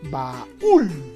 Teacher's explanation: observamos que la mayor fuerza de voz está en la ul. La vocal más fuerte sería la U, más que la A.